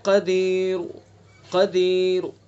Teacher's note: ساکن نہیں کریں گے، بلکہ حرکت کا آخری تہائی حصہ ادا کریں گے، حرکت کا تہائی حصہ۔ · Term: وقف بالروم